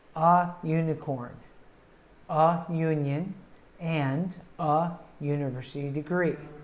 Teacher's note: of each of these words is of course a v but because of the way that the u sounds it has the Y sound at the beginning of it instead of being a short u like umbrella we have a y u sound so instead of saying an